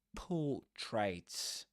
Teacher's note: Accent on the first syllable. Pull. There's a long sound. · You don't say portraits, but portraits without pronouncing the R